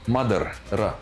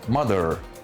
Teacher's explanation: The ending sound is R. Okay. R. The tongue vibrates. R, ra. Okay. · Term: Indian accent